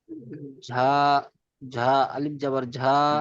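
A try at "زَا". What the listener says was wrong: ঝা নয়, যা। যা, ঝা বলবেন না, যা। যা আলিফ জাবার যা।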